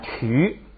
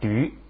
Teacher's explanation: 这个就念曲，是送气的曲，这一加上加字不送气了